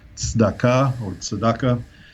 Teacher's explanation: in Hebrew, that sound TS or TZ exists as a separate phoneme at the beginning of a word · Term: TZ sound